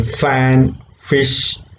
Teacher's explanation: F is voiceless labiodental fricative.